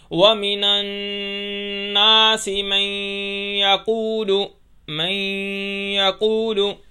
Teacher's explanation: وَمِنَ النَّاسِ پر نون پر ہم نے غنہ کیا اور آگے مَن يَقُولُ پر ہم نے ادغام کیا، تو یہ غنہ اور ادغام دونوں ایک ساتھ وہاں آگے۔